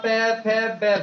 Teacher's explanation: जिन वर्णों का उच्चारण करते समय हमारे दोनों होठ आपस में स्पर्श करते हैं, उन्हें औष्ठीय व्यंजन कहा जाता है